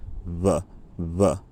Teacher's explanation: a bilabial fricative is just made by um kind of making a vv sound except instead of using one lip and one row of teeth, you're just using both lips